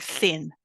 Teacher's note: If you make this carefully, you will feel that you place your tongue against your upper teeth, or even that you stick your tongue out between your teeth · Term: dental